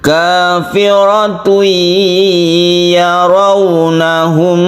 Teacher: Tanwin ini suaranya masuk ke ya, sehingga tanwin itu tidak dibaca masuk ke ya, sehingga menimbulkan tasydid ya, dan ini kita gunakan bi guna dengan dengung. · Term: idgham biguna